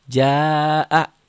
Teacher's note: Nah, karena sudah tuh asalnya birunya sedikit, birunya jadi banyak. Artinya asalnya si ja-nya 1, ja mad tabi'i jadi 2, mad wajib mutasil A-nya jadi 5.